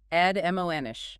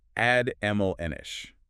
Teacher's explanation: Three syllables stress on the second.